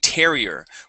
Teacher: It is a terrier with the stress at the very beginning.